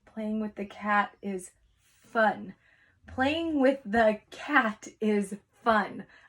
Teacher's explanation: when I spelled that I heard ah but when we say the word fun it's a UH